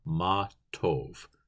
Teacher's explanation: the O can actually be a little more closed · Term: closed o